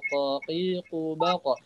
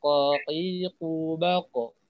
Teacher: Ingat huruf qaf ketika sukun dia itu pasti qalqalah ya, pasti mantul ya. Qaqibaqo. Dan pantulannya itu seperti huruf fathah ya.